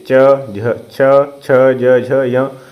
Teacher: च वर्ग आता है आपका तालू में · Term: तालव्य